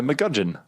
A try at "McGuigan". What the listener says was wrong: Why is it McGudgeon? It's got a U and an I in it.